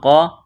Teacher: قوف کو موٹا کرنا ہے ، الف مدہ ہے، ایک الف کے برابر کھینچنا ہے، یا